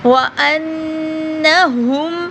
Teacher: نون پہ غنہ کریں گے کیونکہ شد ہے